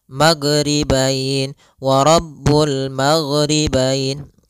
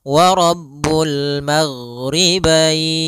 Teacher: huruf gain tidak ada sifat Qalqalah tidak ada sifat pantulan